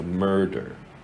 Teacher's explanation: You have the right hook epsilon mer, it's the stressed syllable, it's where the emphasis is, and then the der, it's the end. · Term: schwar